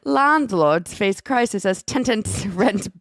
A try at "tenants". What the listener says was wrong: You put an extra T in there.